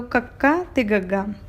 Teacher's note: ਔਰ ਪਿਛਲੇ ਤਾਲੂ ਤੋਂ ਕੱਕਾ ਤੇ ਗੱਗਾ